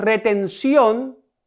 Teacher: la sílaba tónica de esta palabra es la última sílaba, ción, por tanto es una aguda y cuando la aguda termina en N, S o vocal, debo tildarla.